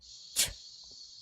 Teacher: The ch sound is produced with one strong puff of air through the teeth, which is then stopped.